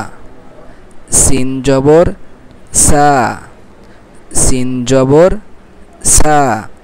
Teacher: সিন উচ্চারণ কি চড়ই শি শি আওয়াজ হবে, সিরসির আওয়াজ হবে এবং পাতলা আওয়াজে হ্যাঁ, আওয়াজটা হবে পাতলা, সা সা।